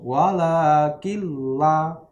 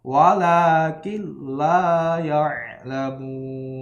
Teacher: tapi nunnya dimasukkan ke lam, langsung walakilla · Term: idgham bila gunnah